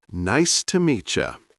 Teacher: In fast speech, it sounds like nice to meet ya. The words blend together. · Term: connected speech